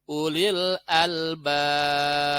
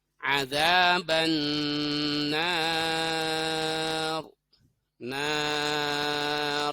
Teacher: Mad Arid lissukun dibaca panjang enam harokat empat harakat atau dua harokat